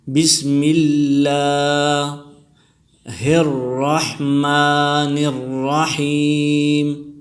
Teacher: بسم اللہ میں لفظ اللہ سے پہلے زیر آیا ہے، تو اس وجہ سے اللہ کے نام کو باریک پڑھیں گے، بسم اللہ. اور اللہ کے نام پر کڑی زبر آیا ہے، کڑی زبر کو ایک الف کی مقدار کھینچ کر پڑھیں گے